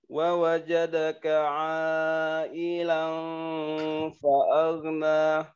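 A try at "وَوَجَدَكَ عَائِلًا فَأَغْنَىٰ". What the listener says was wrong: A-nya panjangin lagi.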